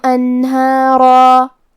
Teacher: ہا حروف ترقیق میں سے ہے تو ہم ہا کو اور مد الف کو ہلکی آواز میں پڑھیں گے، لیکن را کو اور مد الف کو تفخیم سے مطلب بھاری آواز میں پڑھیں گے، انہارا وَيُمْدِدْكُمْ بِأَمْوَالٍ وَبَنِينَ وَيَجْعَلْ لَكُمْ جَنَّاتٍ وَيَجْعَلْ لَكُمْ أَنْهَارًا۔